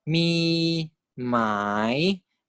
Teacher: Okay, so if we have this word like mi mai, so mid tone is 3-3, rising is 2-1-4. Across the syllable boundary, right, the pitch must go from a 3 when you finish pronouncing the mi, correct, to a 2 when you start to pronounce the rising tone. Mi mai. So there's like a decrease in pitch as you go on to the new word.